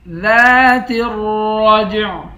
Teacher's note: لام سے بھی نہیں ملائیں گے، را کو موٹا پڑھیں گے، را کو جیم کے ساتھ ملا کر جیم پر قلقلہ کریں گے، آخر میں عین ہے، عین کی آواز نکالیں گے۔